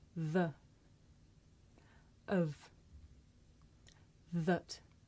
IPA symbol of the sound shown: ə